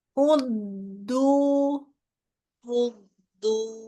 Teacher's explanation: Jadi ditahan dulu kan ada tasdid di situ